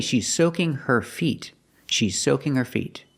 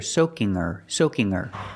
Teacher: We don't hear the H in her, we hear soaking her, soaking her.